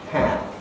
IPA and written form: hæm (ham)